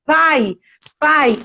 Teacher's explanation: Então, é um ditongo decrescente. Uma vogal forte para uma vogal fraca. Então, um ditongo decrescente. · esse a é forte, esse i tem um som fraco. A gente chama de semivogal.